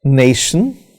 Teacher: in this example nay is stressed and shun is not stressed